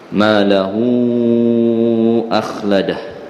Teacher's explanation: Dia jadi panjang sebab apa? Malahu akhladah kerana bertemu dengan hamzah, hamzatul qat'i. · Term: maksilah tawilah